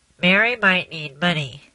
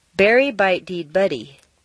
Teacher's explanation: which means turning the nasals into the other consonants